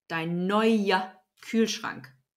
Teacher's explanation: So it's not neue, but neuer. The ER is an A sound, not an R sound.